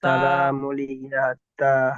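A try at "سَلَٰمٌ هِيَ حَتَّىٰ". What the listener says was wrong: এখানে ইয়াটা বাড়তি অক্ষর দেখেন, ইয়ার উপরে কোনো সাকিন কিছু নেই, ওই জন্য ইয়াটা বাড়তি অক্ষর। তারপরে পড়েন মিম তা, মিম তা জাবার মাত, লাম জাবার লা, মাত লা, আইন লাম জের ইল, মাত লা ইল।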